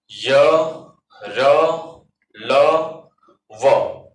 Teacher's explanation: यर लव जो होते हैं वो अल्प प्राण होते हैं।